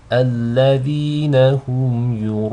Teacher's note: These are both light. So you don't want the hamza to be read with tafkhim, nor do you want the ya to be read with tafkhim, just the ra.